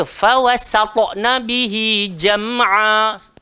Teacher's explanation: huruf ta memang automatik tebal dan gemuk, tapi sin sampai kiamat tak boleh tebal